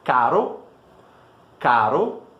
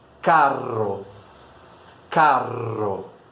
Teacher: Perceba que a pronúncia é muito semelhante entre essas duas palavras, certo? A única coisa que mudou realmente é a duração desse R no primeiro caro e no segundo carro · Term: dupla consoante